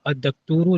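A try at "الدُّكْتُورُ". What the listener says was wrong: अद्दक्तूर दाल के ऊपर पेश पड़ना है ना, अद्दुक्तूर।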